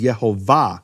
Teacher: more importantly where is the emphasis of the of the word the emphasis of the word is in the final syllable